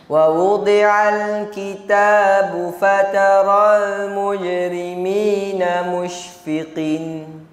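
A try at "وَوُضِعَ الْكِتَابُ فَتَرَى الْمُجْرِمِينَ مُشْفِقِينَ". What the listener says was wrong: Mushfiqin. Ha? Pendek mat hilang terus ustaz. Kemudian fatara tu tak pati elok. Saya pergi baca panjang lanjut. Ha, tak boleh tu.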